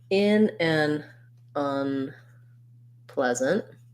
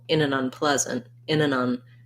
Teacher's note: So in the phrase, in an unpleasant, because the stress in this phrase is on the pla syllable, in an unpleasant, in an un, that goes by really fast and gets a little bit reduced, especially the an.